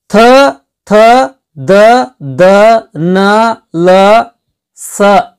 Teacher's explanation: ಇವು ನಮ್ಮ ಬಾಯಿಯೊಳಗ ಮೇಲಿನ ಹಲ್ಲುಗಳಿಗೆ ನಾಲಿಗೆ ತಾಕಿಗೆಸಿಂದ ಹುಟ್ಟುತ್ತಾವ ಸ್ನೇಹಿತರೆ. ಅಂದ್ರೆ ಹಲ್ಲಿನ ಸಹಾಯದಿಂದ ಈ ಅಕ್ಷರಗಳು ಹುಟ್ಟುತ್ತಾವು.